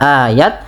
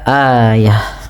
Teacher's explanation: Kemudian pada lafal ta yang di sini ayah, apabila ada ta sukun, maaf ta marbutah berada di akhir bacaan, huruf ta nya kita ganti, kita rubah menjadi huruf H, yang dimatikan. Maka tidak lagi dibaca ayat, tapi dibaca ayah. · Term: huruf ha yang dimatikan